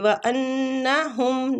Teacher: نون مشدد ہے غنہ کریں گے